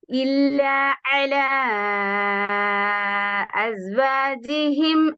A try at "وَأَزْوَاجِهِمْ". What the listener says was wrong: واو ساوند و أزواجهم إلا على أزواجهم و